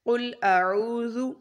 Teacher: اس میں سب سے پہلے قل، قاف بہت موٹا پڑھیں گے، لام باریک، قل اعوذ، حمزہ زبر اس کی آواز ایسے آئے گی، اور عو، عین پیش عو، اس کی آواز عین کی عو اس طرح سے نکلے گی۔ اعوذ، عو کو لمبا کریں گے کیونکہ یہاں پر واو مدہ ہے